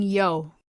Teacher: when you say yo the I is short and the O is long · the dip thong yo is made up of the Glide I and the single vowel o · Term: diphthong yo